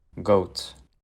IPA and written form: goʊt (GOAT)